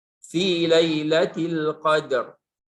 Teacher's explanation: pada saat kita wasalkan murakkak, tipis dia, tarqiq.